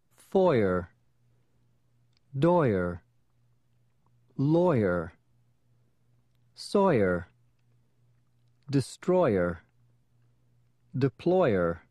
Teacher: For oyer, begin with oi, then as you drop your voice, add yer.